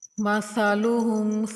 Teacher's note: ثا کو نرمی سے پڑھیں گے، اس میں سیٹی کی آواز نہیں نکالنی